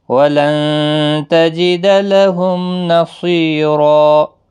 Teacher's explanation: نون ساکن کے بعد حروف اکفا کا تا آئے، اخفا حقیقی ہوگا، غنہ کے ساتھ پڑھیں گے